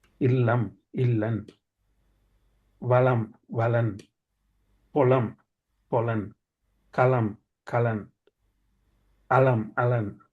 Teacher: இம்மன்னா வர்றது இம்மன்னாவுக்கு பதிலாக நாங்கள் இன்னன்னா பாவிக்கிற பழக்கம் இருக்குது என்று சொல்றார். ஒரு தொடர்மொழியிட கடைசியில் இம்மன்னா வந்தால் அதை நாங்கள் இன்னன்னாண்டும் நாங்கள் உச்சரிக்கலாம் என்று சொல்கிறோம்.